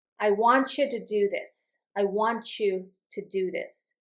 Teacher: You're going to hear this t and y together sounds like a ch. · T and then the Y sound together equal ch in pronunciation.